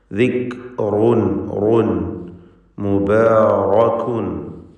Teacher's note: ഈ പദങ്ങളിൽ റാ വന്നിട്ടുണ്ട്. തടിപ്പിച്ച് തഫ്ഖീം ചെയ്ത് സ്വരഭാരത്തോടെ റായിനെ ഉച്ചരിക്കുക. ദിക്റുൻ റുൻ മുബാറകുൻ എന്നിങ്ങനെ റായിനെ നല്ലപോലെ തടിപ്പിച്ച് ഉച്ചരിക്കുക.